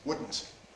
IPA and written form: ˈwʊdn̩t (wouldn’t)